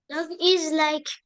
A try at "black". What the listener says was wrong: Black. Black. Regarde, il y a un B devant. N'oublie pas le B.